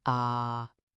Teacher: It's high. It's flat. And you just hold it there. Think of it like a clear, steady musical note. · Think of it like a clear, steady musical note. No dips, no rises, just ah. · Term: first tone